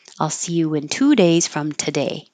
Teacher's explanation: So if I was saying 2 days, I'm going to emphasize two. But in the word today, you won't hear any oo.